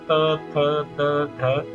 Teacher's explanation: आपकी जीभ का अगला हिस्सा आपके ऊपर वाले दांतों के पिछले हिस्से को टच करता है, तो इसलिए इनको दंत्य बोलते हैं।